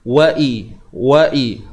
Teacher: Hamzah bawah bunyi I jangan bunyi e bunyi I